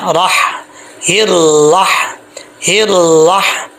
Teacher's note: یہاں پہ ہا کلیئر ساؤنڈ ہے، اس کا تعلق حلق سے ہے، سینے سے نہیں ہے. حلق سے ہے اس لیے اس کو بریک پڑھیں گے.